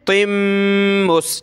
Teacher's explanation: تا کے نیچے دو زیر یعنی تنوین، اس پہ ہم نے اخفا کرنا ہے، یہ اخفا کا کلر ہوتا ہے، ٹھیک ہے، ناک میں آواز پیدا کریں گے۔